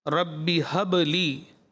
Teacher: با میں ساکن کلکلا واضح